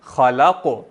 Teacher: خا موٹی لام باریک قاف پھر موٹا. خلق.